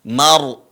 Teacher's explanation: marfu di sini ada ro sukun kita sebelumnya telah membahasnya ketika ada ro sukun sebelumnya adalah fathah maka rnya dibaca tebal